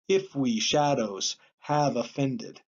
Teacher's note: we are actually beginning with the accented syllable and then going on to the unaccented one so this is a trochee if we shadows have offended and